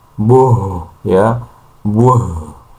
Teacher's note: buh itu dari pangkal tenggorokan. Jadi suaranya agak dalam karena memang makhrajnya ada di pangkal tenggorokan.